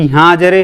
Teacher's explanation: दीर्घ स्वर से भी अधिक समय लगता है और पुकारने में या नाटक के संवाद में इसका प्रयोग किया जाता है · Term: प्लुत स्वर